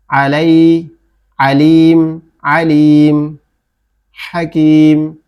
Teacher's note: আ একটু গলা চেপে বলতে হবে। হ্যাঁ, হ্যাঁ মানে ফ্যাসফেসে আওয়াজে। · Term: আইন